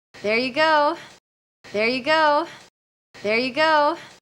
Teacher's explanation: You will need some lip rounding for that. There you, going up in pitch, going up in energy and volume.